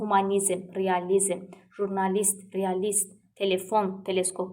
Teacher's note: bu sözlərdə vurğu son hecadadır